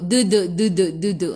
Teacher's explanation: Kita nak da, di, du, sentuh dua-dua gusi dan juga gigi. Jadi dia bunyi lembu, duduk, duduk, duduk.